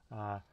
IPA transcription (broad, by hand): ɬ